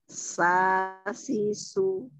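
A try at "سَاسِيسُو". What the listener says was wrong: Jangan dipanjangin juga.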